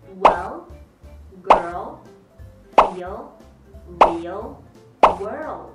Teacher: 而▁dark▁L▁它的发音的位置是在口腔的后面